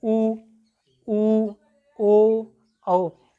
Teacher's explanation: ओठ जो है बिल्कुल गोल हो जाते हैं